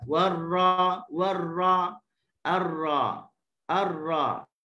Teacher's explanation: permukaan ujung lidahnya dengan lelangit dalam keadaan yang tidak kuat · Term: tawassul